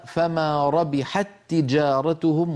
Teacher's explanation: التقى في اللفظ تاء فالاولى ساكنه والثانيه متحركه فادغمنا